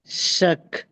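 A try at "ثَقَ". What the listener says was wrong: ஷக்கல்ல தக் ஷக்கல்ல தக் தக் நாக்கு வெளியே வரணுமா? தக்.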